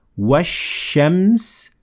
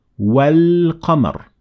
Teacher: In the first example, I completely dropped al, Hamzatul-wasl plus lam, and in the second, I only dropped the Hamzatul-wasl and I pronounced the lam, because the first one is sun al and then the second one is a moon al.